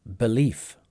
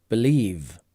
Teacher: a little bit of a difference at the end here as well, with f turning to v. Believe.